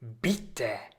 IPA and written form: ˈbɪtə (bitte)